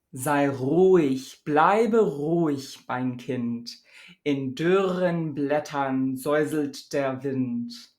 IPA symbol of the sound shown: ʀ